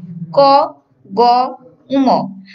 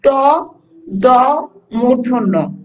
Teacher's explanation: আমরা যে ক বলছি খুব অল্প বায়ু নির্গত হয়েছে বা আমাদের শ্বাসটা খুব অল্প রাখতে হয়েছে, ক গ, উম। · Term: অল্প প্রাণ বর্ণ